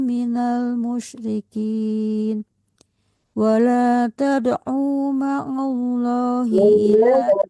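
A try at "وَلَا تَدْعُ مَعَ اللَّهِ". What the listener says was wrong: Wala tad'u ma'allah. Jangan tertahan di karena tidak panjang.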